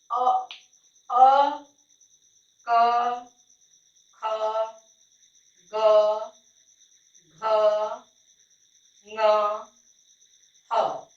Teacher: जो कंठ से स्पर्श होकर वर्ड उच्चरित होता है वह कंठ वर्ड हो गया